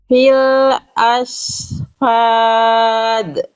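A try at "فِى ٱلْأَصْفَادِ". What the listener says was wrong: Itu kembali jadi shin. Kenapa bisa jadi shin? Karena Bunda yang naik bukan pangkal lidah, tapi tengah lidah. Kalau tengah lidah makhraj huruf shin itu.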